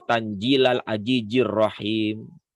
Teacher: Tanzila zai dibaca pakai jim ya